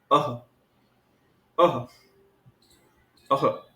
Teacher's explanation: यहां अवर्ण के पश्चात ह ऐसा सुनाई दे रहा है। · विसर्ग के उच्चारण स्थान में सक्रिय अंग कंठ है। तो विसर्ग का उच्चारण स्थान कंठ होगा।